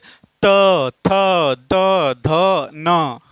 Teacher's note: त वर्ग का उच्चारण आपका दांत से होता है।